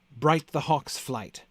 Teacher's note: three of them are stressed right bright the Hawks flight you can't unstress any of those words